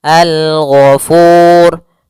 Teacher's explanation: hukum ra tafkhim. Ra yang dia dibaca dengan tebal.